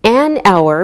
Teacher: We say an hour because we don't pronounce the H, so it sounds like a vowel sound. Same with an honest man.